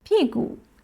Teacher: P, false tone, falling tone. Gu, neutral tone, light and short.